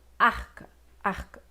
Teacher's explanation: É por isso que em arca o R também será surdo, porque o R acaba assimilando a surdez, o desvozeamento do K · Quando você vai articular cada som, A, o A, R, K, A, fica arca, arca. O K acaba condicionando o R a se desvozear. E o R, ele é sonoro por natureza, esse R, mas nesse caso ele não se torna mais sonoro, porque ele assimila a surdez, digamos assim, do K.